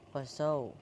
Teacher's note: Fasaw itu ada layin dibaca lembut, huruf waw sukun setelah fathah dibaca au